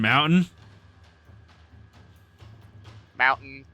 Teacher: We use a glottal stop for a lot of our T's.